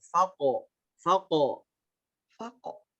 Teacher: Untuk huruf qalqalah ini pantulannya tidak terlalu ditahan ya. Dia langsung memantul ke bunyi o.